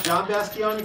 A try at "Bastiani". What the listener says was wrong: Bastioni! There's no O in there. He can't do the O's and the A's.